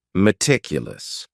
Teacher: this word has four syllables and the stress is on that second syllable